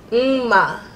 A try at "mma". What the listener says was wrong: Exactly.